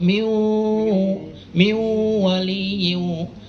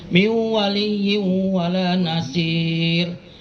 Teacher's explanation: Jadi masuk miu waliyyin. Jadi nunnya seolah-olah masuk ke waw. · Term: Idgham bigunna